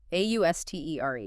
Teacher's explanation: 2 syllables. Stress on the second.